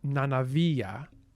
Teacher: it has intervocalic voicing of obstruents